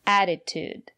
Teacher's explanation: the first letter T is pronounced as a fast D because the syllable after the letter T is not stressed